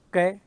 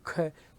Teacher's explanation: क बोलोगे तो ध्वनि कैसे निकलेगी? कम, यानी कि जो निकास वायु का कम होगा। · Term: अल्प प्राण